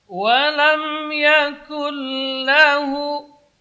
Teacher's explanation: Idgham bermakna idkhal. Masukkan bunyi nun ke dalam huruf lam tanpa ada dengung. Walam yakul lahu la tipis. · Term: idgham bila gunnah